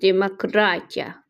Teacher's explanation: Vurğu sözün üçüncü hecasındadır